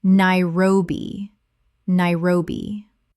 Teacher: Three syllables with the stress on the second.